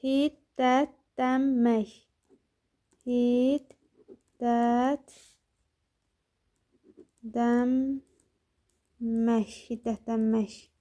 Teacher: Ümumiyyətlə n-dan sonra m gələndə n da çevrilir, bizə m səsini verir. N da m səsini verir.